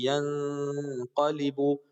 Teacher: نون کی آواز کو ناک میں ذرا چھپائیں گے، غنہ کریں گے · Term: اخفا